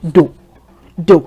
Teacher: And you would notice that my tone is low.